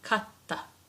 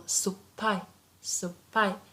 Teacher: we just make the consonant coming afterwards double. So if we have T, it becomes double T, katta. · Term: double consonant